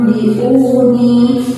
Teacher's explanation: Sedangkan untuk cara membaca hukum bacaan iqlab adalah antara bibir atas dengan bibir bawah itu tertutup dan juga diiringi dengan suara berdengung kurang lebih 2 harokat